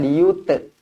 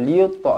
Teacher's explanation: huruf ta yang bertanda mati, qalqalah sughra dibaca melantun. Liyutfi'u, jangan liyute, tak nak.